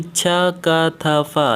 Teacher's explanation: इसके उच्चारण में कोई कंपन नहीं हो रहा है, इसलिए ये अघोष हो जाएगा